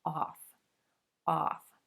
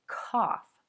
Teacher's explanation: That O-U-G-H can also sound like the ah as in Auburn plus the F consonant, off, off, as in the word cough.